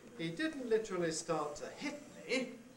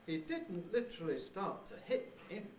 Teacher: succession of little falls little partway falls one on each one starting on each accented syllable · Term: sliding head